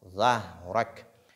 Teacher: ha est placé entre deux lettres emphatiques. Il faut donc faire beaucoup attention pour ne pas qu'elle soit lue de façon emphatique.